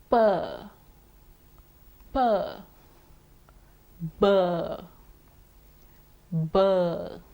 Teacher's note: P and B are bilabial sounds. Bi meaning two, lab meaning lip. So these sounds are made with both the lips.